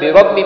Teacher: را موٹی ہوگی، اور را اس کی موٹی ہوگی کہ را پر زبر ہے